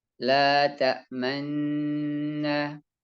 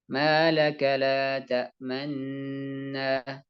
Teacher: Memonyongkan bibir untuk memberi isyarat adanya dhammah tanpa mengeluarkan suara. Dan ini ada satu tempat di dalam Al-Quran, yaitu pada surat Yusuf. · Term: ismam